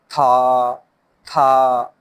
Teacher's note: اس میں زبان کی نوک اوپر والے دانتوں کی بیک سائڈ پہ لگانی ہے